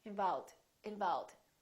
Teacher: when people speak really quickly the letter v tends to disappear